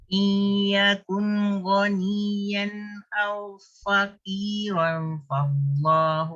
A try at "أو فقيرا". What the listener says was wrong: Fa tu bunyi ada tapi dia kurang harakat. Au faqiran. Itu pun kurang. Idgham dah ada kurang harakat dengung. Yakun izhar. Iyakun kun. Bunyikan jelas.